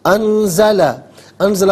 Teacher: انزلہ میں نون ساکن کے بعد زا حرف اخفا ہے تو نون ساکن کو اخفا کے ساتھ پڑھیں گے. ناک میں آواز لے جا کر گنگنانے کا نام اخفا ہے